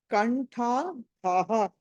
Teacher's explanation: కా తర్వాత మీకు అనుస్వారం ఉంది, ఆ తర్వాత ఠా ఉంది కాబట్టి అక్కడ పంచమాక్షరం